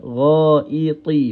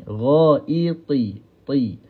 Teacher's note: Ghaiti, huruf ta tebalkan, ya. Ghaiti, walaupun makhraj dia sama dengan huruf ta, tetapi kita kena tebalkan huruf ta ni